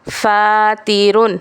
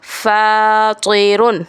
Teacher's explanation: تا کی آواز باریک، سیدھی اور بغیر جھٹکے والی ہوتی ہے، جبکہ تو کی آواز موٹی اور جھٹکے والی ہوتی ہے